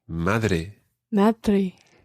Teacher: It's almost like the TH in the word the in English, but it's not quite as soft as that. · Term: softer D